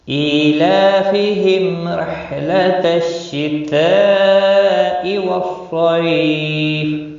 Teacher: لام کے اوپر کھڑی زبر ہے، 1 الف کے برابر کھینچ کر پڑھیں گے۔ میم کا اظہار ہوگا اور زیر کی وجہ سے باریک پڑھا جائے گا